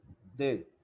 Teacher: Ele é pronunciado colocando a língua entre os dentes